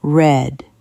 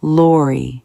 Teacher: Red. Round lips, tongue back. Lori, tongue touches the top.